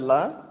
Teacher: மேல் அன்னத்தின் நடுப்பகுதியை தொடுவதால் இந்த லா பிறக்குது